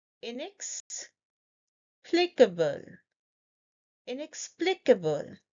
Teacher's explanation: Inex, inex. We stress on this syllable, plea.